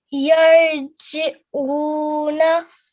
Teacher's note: you've beautifully made the ayn sound and you also elongated it for 2 seconds, which I really loved.